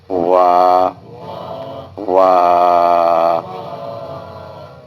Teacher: دونوں ہونٹوں کی گلائی سے ادا کریں گے